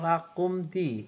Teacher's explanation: Idhar safawi karena ada huruf mim mati atau sukun bertemu dengan huruf dal, cara bacanya terang di bibir dengan mulut tertutup.